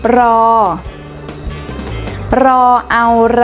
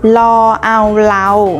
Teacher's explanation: ถ้าเป็นรอเรือเราจะกระดกลิ้นรอแต่ถ้าเป็นรอลิงเราจะไม่กระดกลิ้น